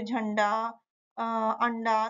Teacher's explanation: अनुस्वार होते हैं जिनका उच्चारण नाक से होता है